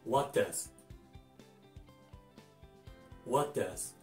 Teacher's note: What の最後の T は基本的に落ちます